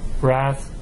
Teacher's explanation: when you have that th at the end of the word the voiceless th a th the vowel here is shorter